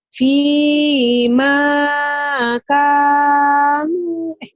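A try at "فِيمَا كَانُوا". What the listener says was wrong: Salah. P-nya panjang. Ma-nya panjang.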